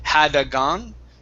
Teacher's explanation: in between had and gone you added an extra sound saying hadagan